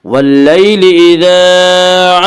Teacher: واللیل اذا الف مدہ، الف ہمیشہ مدہ ہوتا ہے، الف سے پہلے ہمیشہ زبر ہوتا ہے، الف مدہ کو 1 الف کے برابر کھینچ کر پڑھیں گے